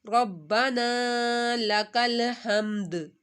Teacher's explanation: ہا کو حلق کے درمیان سے اور دال کو ساکن کر دینا ہے.